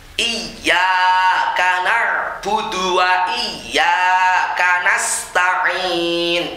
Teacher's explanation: Ya tasdid ini tidak boleh terlalu lama, tidak boleh mendengung. Karena bukan termasuk gunnah musyaddadah, jadi langsung dilepas, ditekan langsung dilepas.